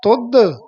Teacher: ਤੁਧ ਦਦੇ ਦੇ ਨਾਲ ਨਹੀਂ ਬੋਲਣਾ ਤੁਧ ਇਹ ਬੋਲਣਾ ਤੁਧ ਧਦੇ ਦੇ ਨਾਲ